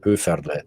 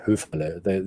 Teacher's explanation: we roll our R's at the front of our mouth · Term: roll the R